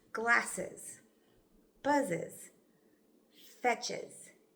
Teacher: When we add ES at the end of a word, the E is pronounced with a schwa.